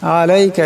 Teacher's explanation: এখানে আইন আসছে, আওয়াজটাকে গলা থেকে চাপ দিয়ে বাইর করতে হবে।